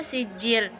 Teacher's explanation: Yang terakhir itu adalah mad tabi'i pada kata sijil, yang mana cara bacanya itu bunyi ji dipanjangkan dua harokat.